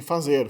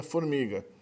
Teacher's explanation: facilita que o lábio inferior toque nos dentes dianteiros superiores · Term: fonema F